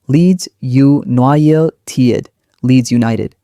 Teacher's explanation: Leeds is strong, then two light beats for United.